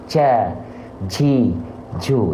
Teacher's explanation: kalau huruf Jim dia jahar maka dia enggak boleh keluar nafas makanya saya tulis dilarang bocor becek nafas ketika melafalkan huruf Jim